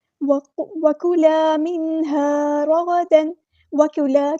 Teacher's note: کاف کو باریک پڑھنا ہے، الف مد آ گیا تو ایک الف کے برابر لمبا کرنا ہے۔ وَكُلَا مِنْهَا، یہاں پہ نون ساکن کی آواز کو ظاہر کرنا، اظہار ہوگا۔